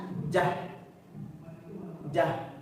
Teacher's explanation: Ada suara jah, jaha, atau di tasdid jaha. Ada suara mengalir. Ini rokhawah.